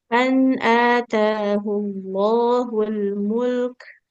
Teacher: Jadi lam dengan kafnya, lamnya dialirkan dulu suaranya mul, baru masuk ke kafnya mengalir nafas.